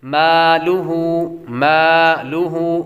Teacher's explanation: میم کو ہلکا سا لمبا کریں گے کیونکہ میم کے بعد الف ہے